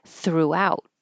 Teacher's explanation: the stress is on the second syllable throughout